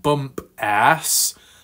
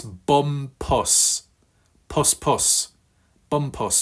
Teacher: with stress on the first syllable not the second